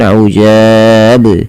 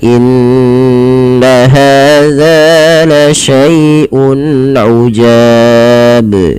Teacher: kesalahan di dalam membaca qalqalah ini adalah tidak memantulkan huruf qalqalahnya, yaitu di sini huruf ba. Misalkan ujab, harusnya dipantulkan ujab ya.